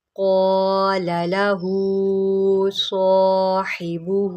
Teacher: قاف کو موٹا پڑھیں، حروف متعالیہ میں سے ہے۔